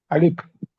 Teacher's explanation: আলিফে কোনো টান হবে না, উচ্চারণ করতে হবে কোথা থেকে? মুখের খালি জায়গা থেকে